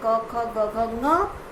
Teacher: ये हम कंठ से बोलते हैं, इसे कंठ्य कहते हैं